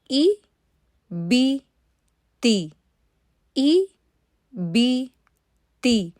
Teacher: تو آپ نے پہلے مخرج پکڑا، اس کے بعد جیسے ہی آپ ای کی آواز پہ جائیں گے نا تو مخرج کو ٹچ کرنے کے فوراً بعد آپ کی جو زبان ہے وہ کسرہ کو ادا کرنے کے لیے بیچ میں سے اٹھ جائے گی. تو کسرہ کی ادائیگی میں زبان تو اوپر کو اٹھتی ہی ہے لیکن ساتھ میں جو اس کی آواز ہوتی ہے نا جو ہم سنتے ہیں وہ ای کی ہونی چاہیے، وہ اے کی نہیں ہونی چاہیے.